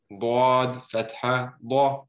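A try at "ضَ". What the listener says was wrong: When you say da, it's fine, but when you're saying the letter, you're still saying dwad a little bit. Keep it flat. Bad, da. Think of it like double A's, triple A's.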